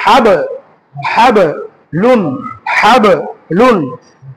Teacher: বা বর্ণে যদি সাকিন হয় তখন বাটাকে কি করে পড়তে হবে, কলকলা করে পড়তে হবে